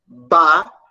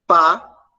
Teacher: Em um dos sons, as cordas vocais elas vão tremer, e em outro, as cordas vocais elas não vão tremer.